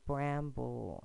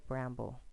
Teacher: you put the schwa sound because that talking vowel is weak